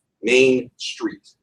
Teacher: pairing of two stressed syllables